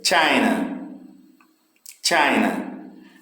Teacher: O início, tá vendo? O início China tem mais força.